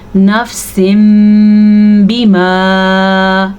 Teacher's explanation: تو اس تنوین کی آواز کو میم میں بدل دیتے ہیں. اس قاعدے کو اقلاب کہتے ہیں.